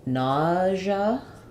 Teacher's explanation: it sounds like we have vowel a in the first syllable and it's stressed